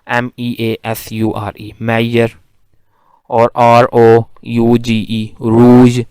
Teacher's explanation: a voiced fricative, voiced palatal fricative